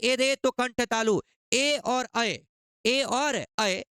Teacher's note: कंठ और तालु दोनों से होता है